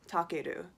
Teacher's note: Anytime you have that R sound, ru, that sounds like L, it will come off maybe with English pronunciation as Takeru, which is a little bit not so good, but I think the meaning is really good.